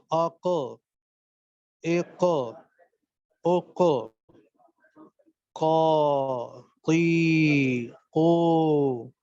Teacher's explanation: تو زبان سامنے دانتوں میں کہیں بھی نہیں لگ رہی، دائیں بائیں سامنے کہیں بھی نہیں لگ رہی. صرف اور صرف جڑ جو زبان کی ہے، جہاں سے زبان شروع ہو رہی ہے، اس کا تھوڑا سا اوپر جگہ وہ اٹھتی ہے اور اوپر گوشت کے لوتھڑے سے وہ ٹکراتی ہے، کوے سے، ہے نا. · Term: قاف